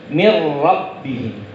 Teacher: Jadi nunnya hilang. Ya, nunnya hilang, kemudian huruf ra yang di depannya yang dibaca. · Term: idgham bila gunnah